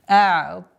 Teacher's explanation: удлинительный алиф подчиняется твердому звуку впереди стоящему та, и поэтому удлинение тоже остается твердым